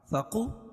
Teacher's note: قاف کو موٹا پڑھیں گے